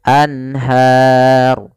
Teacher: suara nunnya harus jelas, tidak boleh ditahan. Anhar tidak, tapi langsung saja anhar. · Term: izhar halqi